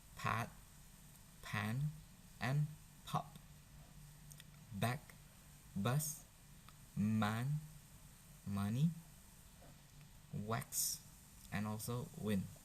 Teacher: upper lip and also lower lips, and then you could make a sound p, b, m, and w · Labial or labio, it is lips. Okay, so where two lips come together, so you could make a sounds p, b, m, and w